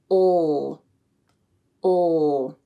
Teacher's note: the back of the tongue is positioned low in the mouth and then it pulls up slightly towards the back of the mouth as you say the sound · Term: dark L